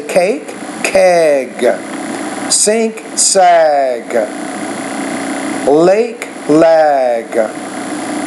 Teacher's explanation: when voice consonants are at the end of a word, the vowel which precedes those sounds should be a little bit longer.